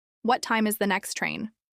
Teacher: Uses question intonation with rising tone throughout